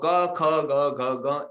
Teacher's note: क के बाद ख ग क्यों आया, क्योंकि वो सब कंठ से निकलते हैं, इसलिए उसको कंठ्य कहा जाता है। कंठ से निकलते हैं वो सभी वर्ड, सभी अल्फाबेट।